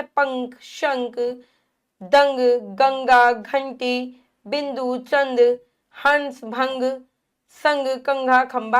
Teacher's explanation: न की ध्वनि आएगी और नाक से